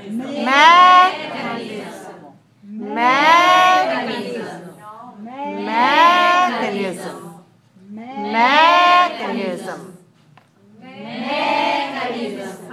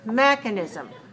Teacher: It has 4 syllables, and I want you to stress it on the first syllable in English.